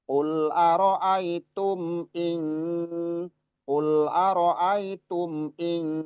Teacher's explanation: Kalau ini cuman mim sukun aja. Jadi mim ketika sukun sifatnya bainiah.